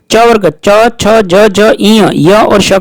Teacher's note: च वर्ग च छ ज झ ई य और श का उच्चारण स्थान तालु होता है